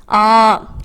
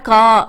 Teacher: நெடில் எழுத்தை ஒலிக்கும் கால் அளவு இரண்டு மாத்திரை